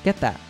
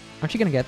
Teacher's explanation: Finally, the T at the end of get and that is pronounced with a stop T sound, which means that the T sound is not fully pronounced, but is instead stopped at the back of the throat